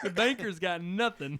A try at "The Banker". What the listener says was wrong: It sounds like you're saying Baker. The Baker.